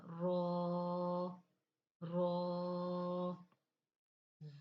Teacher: دیکھیں رو، زبان کی نوک سامنے اوپر دانتوں کے بالکل ساتھ ہی، اوپر والے دانتوں کی جڑوں کے ساتھ ہی ہماری زبان کی نوک لگ رہی ہے، تو یعنی کہ ہمارے تالو کا بالکل مقابل ہو گیا. زبان کی نوک اور مقابل کے تالو سے ادا ہوگا